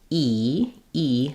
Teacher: the front of the mouth so when I say e e my tongue is up high and very far forward and there's just a little tiny space there · the reason e is called a high front vowel is that it happens high and and front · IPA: /i/